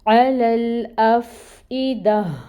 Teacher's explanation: پھر دال کے اوپر زبر ہے، فتحہ کی حرکت 1 کاؤنٹ، اور پھر آیا مکمل ہو رہی ہے تو گولتا کو ہا میں بدل دیں گے اور اس کی ہمس کو ادا کریں گے۔ گولتا وقف کی صورت میں گول ہا میں بدل جائے گی اور اس کی ہمس کو واضح کریں گے۔